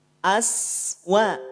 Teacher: Sin punya sifat hams juga punya sifat rakhaah punya sifat alirkan napas punya sifat alirkan suara dialirkan